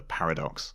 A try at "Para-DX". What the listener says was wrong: It's pronounced Paradox, it's Para-DX. Kind of like the deluxe things they have with the toys. Paradox.